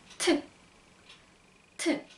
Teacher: 쌍 디귿 발음이 나지만 무성음이라서 발음은 사실 트. 트 발음이 나요.